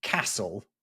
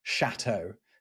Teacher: Castle is coming from one French dialect, and chateau is coming from another one, where you've got the k and the sh.